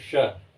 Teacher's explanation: ठीक है, तालु, जब आप इस श को बोलेंगे तो आप देखेंगे मुख से जो वायु निकल रही है तालु को स्पर्श करके बाहर आ रही है